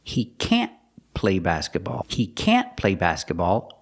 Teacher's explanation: stress the word can't to express that it's negative